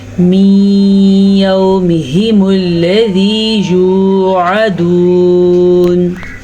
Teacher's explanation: नून साकिन के बाद फिर से या आ गया तो यहाँ पे इदगाम बिल गुन्ना होगा